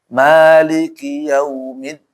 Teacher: Walaupun kadang juga mirip sebenarnya sih kalau nggak salah bukan u total tapi dia pertengahan lah antara u sama o tuh